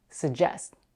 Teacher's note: Some people put the back of the tongue up for the g sound, but they don't release it, suggest. Many people, however, drop the first g and only pronounce the j sound, suggest. I personally don't pronounce the g.